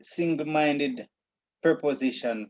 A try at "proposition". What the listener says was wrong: Proposition, not pre. Yes, it's proposition.